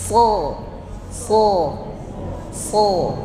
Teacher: langit-langit disebutnya sifat istila iya istilla naiknya suara ke langit-langit kemudian Shad juga ada yang disebut dengan itbaq terkumpulnya suara di dalam mulut